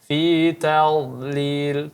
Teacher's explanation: huruf dha ditebalkan lagi sebisa mungkin